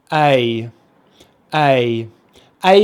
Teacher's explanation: both mouth positions the tongue is always forward in the mouth so the sound is coming from the front front of the mouth the only difference is we start with the jaw open and then we finish with it closed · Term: diphthong